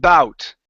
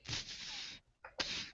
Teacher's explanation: So the B sound, the difference between the B and the P is that the B is voiced